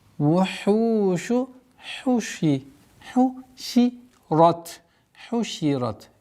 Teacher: Обратите внимание на гортанность произношения и долгота в размере двух огласовок даммы